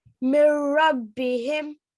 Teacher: complete merging and there's no ghunna at all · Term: Idgham Kamil